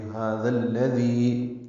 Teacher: دال کو لام سے ملا دیں گے،